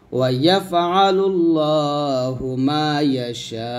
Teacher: সাথে 4 আলিফ টান দিয়ে হামজাকে সাকিন করতে হবে